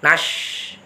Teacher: Shin itu tengah lidah. Bukan ujung lidah, tetapi tengah lidah. Yang ditekan tengah lidah.